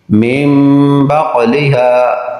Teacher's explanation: نون ساکن کے بعد با آیا تو نون کو میم سے بدل کر اخفا کیا، یعنی غنہ کر کے پڑھا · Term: اقلاب